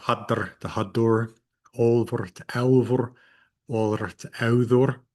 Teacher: R's that are at the end of so many words after other consonants in Old Norse, those are going to get a U in between the root and that R